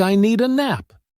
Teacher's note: It often sounds like I need a nap. The words need and a connect so smoothly that the D sound blends in. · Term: linking sounds